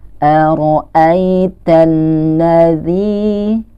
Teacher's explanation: Nah, dia dibaca panjang za-nya nih sebanyak dua harokat.